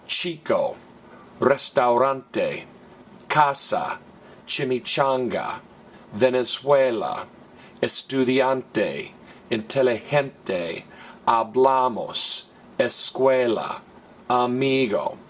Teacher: which end in a vowel an N or an S and in all of these the next to last vowel gets stress